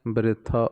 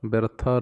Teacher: ਸਿਹਾਰੀ ਰਾਰੇ ਨੂੰ ਪੋਲਾ ਜਿਹਾ ਪੜਨਾ ਹੈ